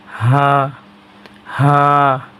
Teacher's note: এই হা কোনো গলার মাঝে চাপ হবে না, শুধু মুখ দিয়ে বাতাস বাইর হবে